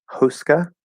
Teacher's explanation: i'm just doing a schwa for that a at the end